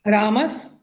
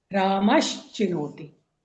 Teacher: तो ये बनता है रामश चिनोति। मतलब जो स है ना वो श हो जाएगा, दंत स जो है वो तालव्य श हो जाएगा।